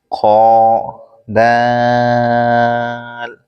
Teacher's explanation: خو اوپر کے حلق کے اوپر والے حصے سے ادا ہوتا ہے اور دال زبان کی نوک اوپر کے دانتوں کی جڑ سے ادا ہوتا ہے